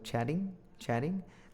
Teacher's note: Not a hard D. Slightly aspirated. It's kind of in between a T and a D. · when we speak quickly, uh, because I'm American, we like to change the T's to D's.